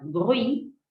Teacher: La palabra bruit, ruido, esta T final tampoco se pronuncia.